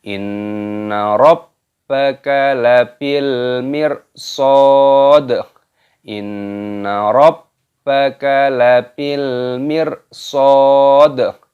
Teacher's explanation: Inna, nun tasdid dibaca gunnah berdengung. Inna rabbaka, rabba tasdid dimasukkan rabbaka.